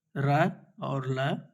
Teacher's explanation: दंत मूल के अंतर्गत र और ल